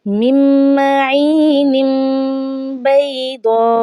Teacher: नून तनवीन को मीम से बदल कर पढ़ा जाता है इस सूरत में कि तनवीन के बाद छोटा सा मीम लिखा आ जाए और उसके आगे ही हरफ़े बा हो। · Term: इक़लाब